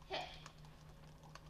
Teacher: hit is shorter in duration you don't fully release the flow of air